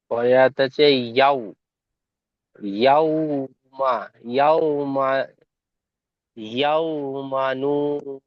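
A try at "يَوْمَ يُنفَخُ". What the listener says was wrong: ইয়াও মানু হবে না, ইয়াও মা ইউন ফাখু।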